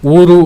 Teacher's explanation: ಒಂದಿಷ್ಟು ಒತ್ತಿ ಇನ್ನು ಹೆಚ್ಚಾದಂತ ಉಸಿರನ್ನ ಹಾಕ್ತೇವೆ ಅದಕ್ಕೆ ಎರಡು ಮಾತ್ರೆ ಅನ್ನುವಂತದ್ದನ್ನ ನಾವು ಹೇಳಬಹುದು ನಂತರ ಬರುವಂತಹದ್ದು ಋ ಮತ್ತೆ ಋ ಸ್ನೇಹಿತರೆ ಈ ಋ